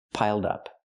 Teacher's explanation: Link the sounds, piled up. Pronounce it like one word, not piled up, but piled up.